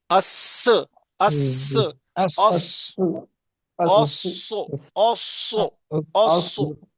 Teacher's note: ओसो मोटा पढ़ना है सद को बड़ा पढ़ना है